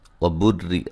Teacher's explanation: وبری، را کو باریک پڑھیں گے، را کے نیچے زیر ہے